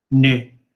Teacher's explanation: é o infinitivo, que termina em ne, com o N retroflexo